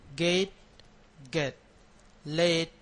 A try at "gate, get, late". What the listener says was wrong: Okay, you want to make it a little bit longer than what you're doing. The first vowel is a little bit shorter, so gate, get, late, let.